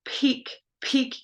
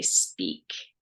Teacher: Peak with a puff of air and peak without a puff of air are allophones. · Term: aspirated